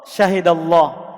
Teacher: jika ada lafadz Allah kemudian sebelumnya adalah fathah maka dia dibaca tebal